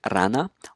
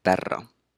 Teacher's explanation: the trill phoneme, such as an initial R in the word rana or a double R between two vowels as in perro